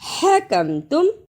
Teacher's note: حکم تم، ہا کی صحیح آواز نکالنا۔ ہا کو نکالنے کا طریقہ، حلق سے آواز کو رگڑ کر نکالنا ہے